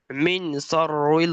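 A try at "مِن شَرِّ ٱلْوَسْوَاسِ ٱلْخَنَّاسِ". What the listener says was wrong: এখানে নুন সাকিনের পরে শিন এসছে, নুনটাকে ইকফা করতে হবে, গুন্না করতে হবে। মিন শাররিল ওয়াসওয়াসিল খান্নাস।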